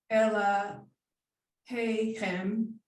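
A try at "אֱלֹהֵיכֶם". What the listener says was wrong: Elo, don't forget the vowel up here. Elo, lo. So what letter is this here? How do you pronounce, what vowel? What vowel is here at the beginning of the word? When it doesn't have anything under it, then it's the oo.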